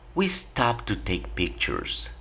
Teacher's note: después del ed hay una palabra que inicia con la T. Entonces el ed no tienes por qué pronunciarlo. Tú pronuncia el verbo como si estuviera en presente y te van a entender perfectamente.